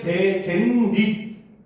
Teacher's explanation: 뒷말의 첫 소리 모음 앞에서 니은 소리가 덧나는 경우 이거를 니은 첨가라고 합니다